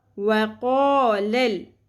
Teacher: لام زبر لام ساکن لل، لل قلقلہ نہیں کرنا